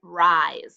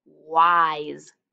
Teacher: the s sounds like z because it's between two vowels